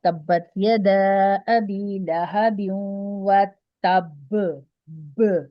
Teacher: با کو اصل میں ہم ہلا رہے ہوتے ہیں، کیونکہ با پہ سخت والا کلکلا کرتے ہیں۔ سخت والا کلکلا ہوتا ہے جب لفظ آخر میں آئے اور اس پہ تشدید کا بھی نشان ہے، تو پھر ہم اس کو سختی کے ساتھ ہلاتے ہیں، ٹھیک ہے؟